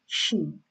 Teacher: middle part of the tongue touching the middle part of the palate like she, and spread your voice like she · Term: Sheen